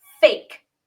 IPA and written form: feɪk (fake)